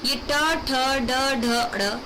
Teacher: ये मूर्धन्य होते हैं, ये मूर्धा से बोले जाते हैं।